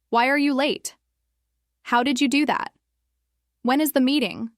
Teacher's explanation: All of these have falling intonation. Your voice comes down slightly at the end, giving the sentence a clear, complete feeling.